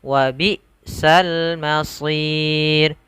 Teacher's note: usahakan hamzahnya itu seakan-akan putus